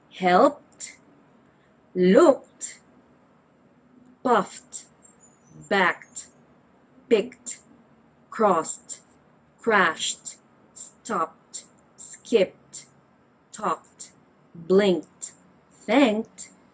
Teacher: All of these words follow the T sound because they end in a voiceless consonant.